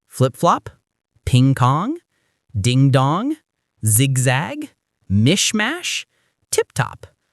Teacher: Ever notice something? The vowel sounds always go from i to a or o. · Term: reduplication, ablaut reduplication